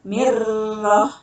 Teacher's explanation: Asal katanya min roh, ya, min roh, dibacanya mirroh mati, ya. Ini nun mati bertemu dengan roh, itu hukumnya idgham bila guna.